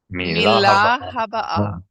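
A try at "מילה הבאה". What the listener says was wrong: That's right.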